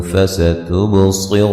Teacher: سین کو باریک سیٹی سے ادا کریں گے، صاد کو موٹا ادا کریں گے، با پہ قلقلہ کریں گے، را کو موٹا ادا کریں گے، با پہ یہاں بھی قلقلہ ہے، صاد اور را کو موٹا ادا کریں گے، اور رو و مدہ ہے۔